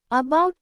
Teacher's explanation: ఇది long vowel కాదు, short vowel కాదు, ఇది neutral sound. Schwa is a very light, unstressed sound like a small a. It's not a long vowel or a short vowel, it's a neutral sound.